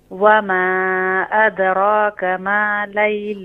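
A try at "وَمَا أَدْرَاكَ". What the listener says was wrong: را کے اوپر کھڑی زبر کو ایک الف کی مقدار کھینچے نا. وما ادراک. را کے اوپر کھڑی زبر ہے نا.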